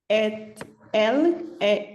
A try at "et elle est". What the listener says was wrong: elle, on ne fait pas la liaison, on ne prononce pas le T de E, d'accord? Et elle